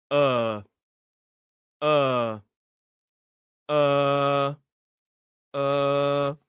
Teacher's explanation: it's a long vowel sound. It's a uh sound. Your tongue is kind of here in the middle of your mouth and you just hold it.